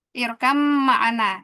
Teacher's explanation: Ba-nya masuk ke mim jadi irkam.